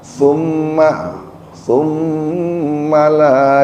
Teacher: pakai tsa ujung lidahnya digigit sedikit huruf tsa bukan huruf Sin